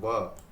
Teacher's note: ये दांतों और ओष्ठ यानी कि होठ दोनों से मिलके बनता है